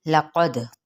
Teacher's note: क़ाफ हरूफ़ मुस्तालिया में से दाल पर कलकला,